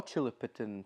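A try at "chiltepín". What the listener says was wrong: I feel like you're putting a couple extra syllables on that. Chilipitin.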